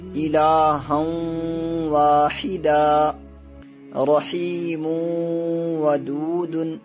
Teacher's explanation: اب ان دونوں مثالوں میں دیکھیے، یہاں تنوین کے بعد واو آ رہا ہے، اور اس لیے تنوین یا نون ساکن کے بعد اگر واو آئے حروف یومن کے 4 حرفوں میں سے، یا، واو، میم، نون، ان حرفوں میں سے کوئی بھی حرف آئے تو 1 الف کے برابر ہم ناک میں آواز کو چھپا کے پڑھیں گے، یعنی کہ اس میں گنہ ہوگا